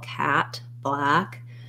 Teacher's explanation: the most open forward vowel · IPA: /æ/